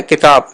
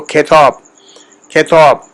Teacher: اب کتاب ہم نے بولنا، لفظ کتاب اردو میں ہے کتاب، لیکن جب جدید فارسی میں اس کو بولیں گے تو وہ کھیتاب، کھیتاب، تھوڑا سا اس میں کھے کی آواز ڈالیں گے